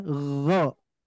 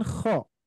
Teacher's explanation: huruf ghain itu tidak lak-laknya itu tidak terlalu goyang gitu ya. Jadi lebih nempel. Maka bunyinya gho. Berbeda dengan kho. Kalau kho lak-laknya itu bergetar.